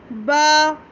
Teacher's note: तो ये हमारे तर हिस्सों से बा अदा हुआ, होठों के तर हिस्से से, गीले हिस्से से